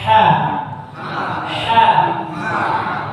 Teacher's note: Ya, ha-nya yang tipis dari tengah tenggorokan.